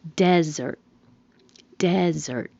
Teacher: The stress is on the first syllable, desert. Desert. If it's the verb, the stress is on the second syllable, desert, meaning to leave.